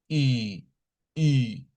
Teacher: Esta es como hacer la I, pero redondea sus labios. Y, y, los labios bastante cerraditos. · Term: la I redonda